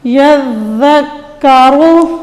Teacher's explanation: را کو ہم موٹا کریں گے کیونکہ اس کے اوپر پیش آ رہی ہے۔ اب وقف کی صورت میں را کو ہم نے ساکن کر دینا ہے۔